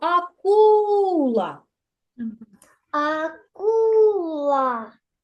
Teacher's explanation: ми покладемо на другий склад на звук у акула Бо саме другий склад являється наголошеним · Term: наголос